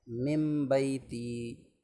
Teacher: نون ساکن کے بعد با رہا ہے، تو اقلاب کر سکتے ہیں